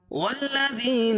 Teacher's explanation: واو کو لام میں ملائیں گے کیونکہ لام کے اوپر تشدید ہے، اور تشدید والا حرف 2 مرتبہ پڑھا جاتا ہے اور سختی کے ساتھ